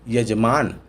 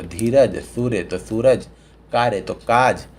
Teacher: संस्कृत शब्दों में प्रयोग य वर्ण तद्भव में ज वर्ण का रूप ले लेता है